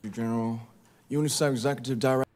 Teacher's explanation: He's blending UNICEF and executive, and I think he loses that F sound.